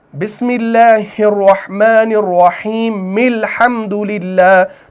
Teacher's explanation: تو میم لام زیر مل ہو جائے گا, اس کو ملائیں گے کیونکہ ہم یہاں پر کیا کر رہے ہیں, وصل کر رہے ہیں, اور وصل کی صورت میں اس میم زیر کو آگے لام ساکن کے ساتھ ملایا جائے گا